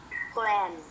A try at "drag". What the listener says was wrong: No. You don't need to pronounce from the back. You have to pronounce from the front. Dr, and g.